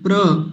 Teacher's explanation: प तो बहुत हल्का सा बोला जाएगा क्योंकि आधा है